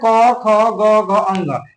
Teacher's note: क वर्ग है क, ख, ग, घ, ङ यानी कि याद रखिएगा जो भी आपको क ख, ग, घ में आएगा ना वो आपको कंठ को स्पर्श करता है